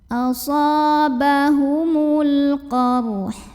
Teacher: Lalu alif lamnya namanya alif lam qamariyah, karena alif lam ketemu dengan huruf qamariyah yaitu qaf, maka lam sukun dibaca dengan idhar atau jelas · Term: idhar qamari